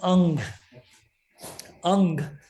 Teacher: angel so notice that the term Ang Ang if you notice has a nasalization doesn't actually have a character n in the middle